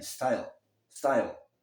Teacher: O E não é pronunciado, então a pronúncia termina no L.